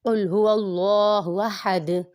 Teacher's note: حمزہ متحرک، ہا متحرک، اب دال وقت کی وجہ سے ساکن ہو جائے گا تو یہاں پر بھی قلقلہ خوب ظاہر ہوگا۔